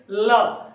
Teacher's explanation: तो जब भी आप ल को बोलेंगे तो ल बोलिए, ल। जीभ का आगे का भाग ऊपर के तालू को लगेगा और लगने के बाद जो वायु है वो जीभ के आसपास या बगल से निकल जाती है। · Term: पार्श्विक वर्ण